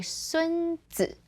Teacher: if you know we're talking about grandchildren and not 孙 子, the philosopher, it would be 孙 子 with a fifth tone.